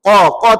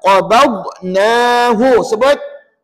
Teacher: Qa qa tebal. Qaba ba nipis dhad tebal.